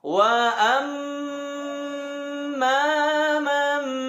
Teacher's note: Saat nun sukun bertemu ba di surat dan di kalimat manapun, kawan-kawan harus membaca dengan iqlab. Nun sukunnya hilang, diganti dengan suara mim.